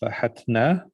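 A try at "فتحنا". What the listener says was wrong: Fa? What about the ta? You dropped the ta.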